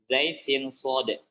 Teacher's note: Tiga huruf ini adalah huruf safir, huruf yang memiliki suara tambahan.